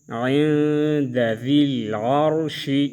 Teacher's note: نون میں اخفا کریں گے اور را کو موٹا پڑھیں